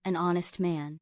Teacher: honest starts with a silent H, so it's a vowel sound.